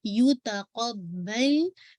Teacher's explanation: make sure again आपको क़ाफ़ को heavy करना है और बा पे शद को वाज़ेह करना है